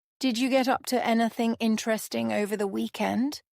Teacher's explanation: Did you often blends to sound like did you. Anything interesting flows together. Stress is on inter-esting.